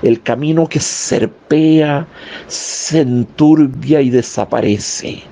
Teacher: Machado usa la sibilante abierta, alveolar, fricativa, la S